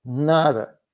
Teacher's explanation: they're just speaking so fast that you don't hear the initial D